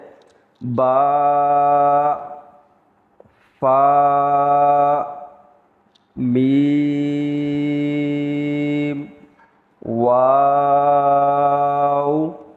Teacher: پیارے بچوں آپ نے دیکھا کہ با میں ہمارے ہونٹ مل گئے ہیں، فا میں بھی ہمارے ہونٹ ملنے کے قریب تھے، میم میں ہمارے ہونٹ ملے ہیں، اور واو میں ہمارے ہونٹ گول ہوئے ہیں